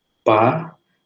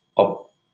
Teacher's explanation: Ya, tidak meledak begitu ya, jadi tertutup, stop. Jadi beda antara pa dengan op ya, bisa dipraktikkan, ada yang meletup ada yang tidak.